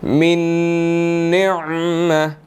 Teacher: نون جو ہے وہ مشدد ہے، یہاں پر غنہ ہوگا